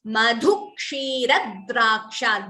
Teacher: Dvitvam between Ra and Dra.